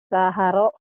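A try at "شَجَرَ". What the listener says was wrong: Ada titiknya. Syajaro. Syajaro. Syajaro. Nggak apa-apa lupa titik. Yang bawah, nih titiknya. Tadi titiknya di bawah, sekarang titiknya ke atas. Ayo, jangan ketuker.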